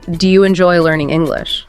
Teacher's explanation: your voice goes up inviting a yes or no like you're leaving the door open for them to answer precisely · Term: Rising intonation, rising intonation